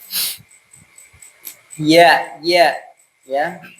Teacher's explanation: Tengah lidah bertemu dengan ya, langit-langit. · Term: huruf ya